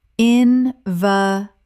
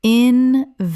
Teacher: in-va-lid, stress on first syllable.